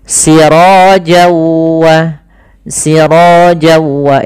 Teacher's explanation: Nah, kemudian ketemu waw maka n-nya hilang, masuk ke waw, jadi waw-nya double. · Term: idgham bi gunnah